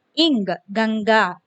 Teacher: गा वर्ग के पहले इंग का रूप ले लेता है